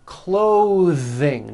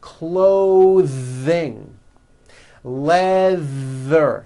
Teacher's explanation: notice how my tongue comes out in the middle of the word and the th sound is pushed Out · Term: voiced th